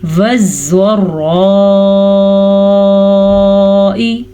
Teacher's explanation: زوات کو پر پڑھنا ہے. جبکہ زوات پہ بھی شد ہے، را پہ بھی شد ہے، دونوں شدوں کو لے کے چلنا ہے. اکثر لوگ 2 شد جب آتے ہیں تو ایک شد کو لے کے چلتے ہیں اور ایک کو چھوڑ دیتے ہیں.